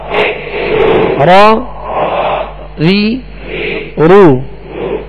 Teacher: اس کی ادائیگی میں آواز میں کپ کپاہٹ ہوگی، جسے راشا کہتے ہیں، کپ کپاہٹ ہوگی.